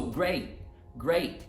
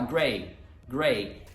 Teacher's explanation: Então não é só não pronunciar o T, mas a gente precisa cortar, fazer a pausa da emissão de ar. · Se você disser great e aí você for usar o glottal stop, você precisa dar uma pausa e cortar o A mesmo.